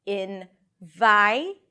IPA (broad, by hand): ɪn.ˈvaɪ